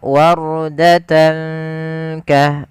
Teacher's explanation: Kemudian pada lafal tan ketemu kaf, ini ada bacaan yang namanya bacaan ikhfa, yaitu cara membacanya kita samarkan tannya ke huruf kaf